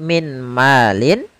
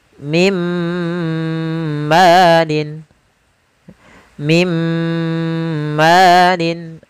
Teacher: Langsung dimasukkan ke huruf setelahnya dan ditahan suara gunnah pada huruf yang setelahnya. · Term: idgham bil gunnah